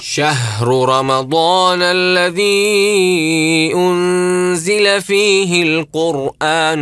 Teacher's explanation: الراء التي في القران راء ساكنه يكون حكمها ايش التفخيم لانها راء ساكنه قبل حرف مضموم